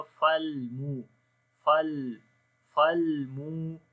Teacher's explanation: فالمو، لام کے اوپر اسی طرح توسط ہوگا، فالمو فالمو، مو کو لمبا کریں گے، واو مدہ ہے یہاں پر